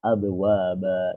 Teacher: ba sama waw, satu makhraj dia dengan bibir